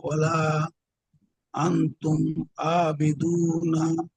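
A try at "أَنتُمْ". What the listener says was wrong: আনতুম হবে কেন? আতুম। গুণনা করবেন না।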